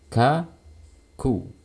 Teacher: seperti ini ya biasa aja kita hanya perlu menempelkan lintas dan saat kita melepas lidah otomatis akan menghasilkan suara aliran nafas jadi tidak perlu didorong terlalu kuat